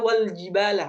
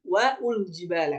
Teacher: Alif tersebut tidak akan terbaca langsung masuk ke huruf lam dibaca Wal jibala bukan waul Jib ini